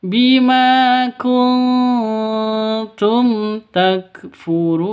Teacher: Bima kuntum, nun mati bertemu dengan ta. Cara bacanya samar didengungkan, siap-siap ke huruf ta-nya karena bacaan ikhfa hakiki.